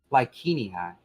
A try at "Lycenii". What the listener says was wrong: That would be the classical Latin pronunciation, not the ecclesiastical Latin pronunciation. Ecclesiastical Latin does soft Cs.